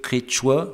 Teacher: Et le terme qui a donné origine au nom de la langue, quechua, dont le sens premier est vallée tempérée, vallée andine tempérée, est prononcé quechua, c'est-à-dire avec une première voyelle qui est quelque chose à mi-chemin entre notre E et notre I, disons, pour simplifier, est interprété par les hispanophones comme un E, et donc ce terme comme quechua.